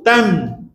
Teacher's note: kan tam cuba sebut tam >> rapat bibir selagi tak rapat bibir tak jelas nun okey rapat dalam keadaan bunyi mati dialah dalam keadaan bunyi mati tam >> dan dia juga ada tawasuh ada di hidung dengung sikit